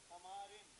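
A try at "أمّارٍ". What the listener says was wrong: امارن، میم پہ شد.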